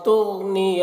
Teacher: تغنیہ غین کو پر پڑھیں گے اور غین میں قلقلہ نہ ہونے پائے اس کا خیال رکھنا ہے۔